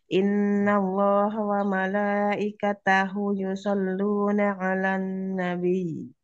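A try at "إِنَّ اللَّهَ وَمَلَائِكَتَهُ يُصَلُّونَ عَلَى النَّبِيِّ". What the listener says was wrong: Panjang Om. Domir hu panjang. Panjang.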